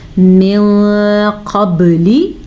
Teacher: اس کے علاوہ یہ حروف مستعلیہ میں سے بھی ہے، یعنی اس قاف کی وجہ سے ہم نون ساکن کو چھپا کے پڑھیں گے